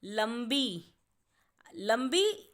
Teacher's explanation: लंबी जब हम बोलेंगे तो ल के बाद म की आवाज़ आ रही है, इसीलिए उस म को दर्शाने के लिए हम ल पर बिंदु लगाएंगे और शब्द बनेगा लंबी।